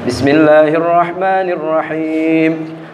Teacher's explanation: ketika kita melafazkan huruf H ini yang memang keluarnya dari wasatul halqi, tengah tenggorokan